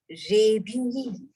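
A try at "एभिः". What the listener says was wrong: Not ra.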